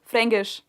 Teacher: they don't pronounce the K, they pronounce it like a G